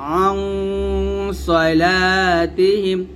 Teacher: আইন নুন জবর আং বলতে হবে গুণ মোটা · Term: মোটা গুণনাটা